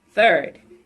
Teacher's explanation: As in third. It's a voiced sound. It's an interdental sound, and it's fricative sound.